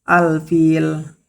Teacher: Di situ pertama alfil ada hukum alif lam qamariah karena huruf lam bertemu huruf fa dibaca jelas